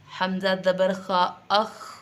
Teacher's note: پستی رہے گی پڑھنے میں لیکن ہوا جاری رہے گی، ہوا منہ کے اندر سے نکلتی رہے گی. لفظ ہوا پہ بالکل بند نہیں ہو جانا، رک نہیں جانا، بلکہ ہوا اس میں کیا رہے گی؟